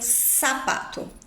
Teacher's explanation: toda a América Latina pronuncia a letra Z com som de s